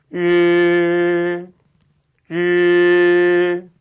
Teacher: 르 발음은 마찬가지로 딱딱한 입천장 앞쪽에다가 혀끝을 대는 거였어요. 그 사이를 바람을 통과시키면서 그러니까 꼭 하는 위치에서 발음을 내시면 되겠습니다.